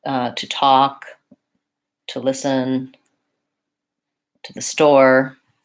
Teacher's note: So in to talk, to listen, I'm using the ta because this word is reduced, unstressed, and it has the unstressed vowel